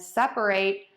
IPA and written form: ˈsɛpəˌreɪt (separate)